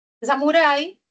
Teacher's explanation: es un diptongo de vocal abierta con cerrada. La abierta suena más